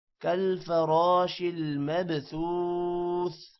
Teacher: را موٹا ہوگا، با پر قلقلہ ہوگا